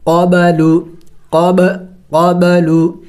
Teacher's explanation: ساکن ہے تو قلقلہ کریں گے، یعنی ہلا کے پڑھیں گے